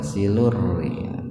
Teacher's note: Rnya dikasrah gitu. Jadi rnya dibaca tipis.